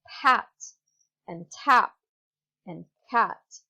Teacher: you hear that there's some air coming out of your mouth. There's a sort of H when you say the word pat and tap and cat. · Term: aspiration